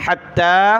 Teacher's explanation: جُنُودُهُ مِنَ الْجِنِّ وَالْإِنسِ وَالطَّيْرِ فَهُمْ يُوزَعُونَ حتى إذا أتوا حتى تا کو تشدید ہے سخت کریں گے اور کھڑا زبر مد کی وجہ سے اس کو کھینچنا ہے حتى اور یہاں ذال پر زبان نکالیں مد کی وجہ سے